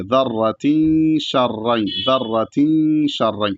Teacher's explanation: اخفا کا جو طریقہ ہے کہ پورا نہیں پڑھیں گے، نہ تو نون ساکن کو نہ تنوین کو، تھوڑا پڑھ کر کے ناک میں آواز لے جائیں گے ، تو ویسے ہی ادا کریں گے، ذَرَّةٍ شَرًّا، ذَرَّةٍ شَرًّا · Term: اخفا والا گنہ